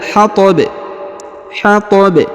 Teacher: huruf ba yang di ujung disukunkan karena berada di ujung ayat atau di ujung bacaan lalu kemudian kita pantulkan atau kita qalqalahkan